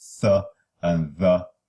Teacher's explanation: Linguodental fricatives linguodental or interdental, require the tongue tip to be placed between the upper and lower incisors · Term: interdentals